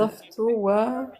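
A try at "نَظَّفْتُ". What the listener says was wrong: Par contre, t'as oublié shadda sur ta. Et sur dha. Il y a shadda, on appuie.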